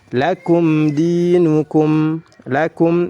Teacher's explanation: lakum mimnya dibaca jelas karena setelahnya huruf dal. Dibaca panjang, 2 harokat saja karena dihukumi mad tabi'i. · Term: izhar